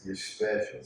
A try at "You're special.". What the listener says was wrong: See, you put too much emphasis on it. It's supposed to be simple.